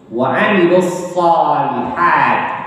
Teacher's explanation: Huruf shad itu ujung lidah agak menempel dengan pangkal gigi seri bawah.